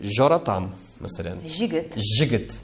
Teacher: все слова, которые в литературном языке звучат на «и» краткой, например, начинается на «йод», мы их «ж» говорим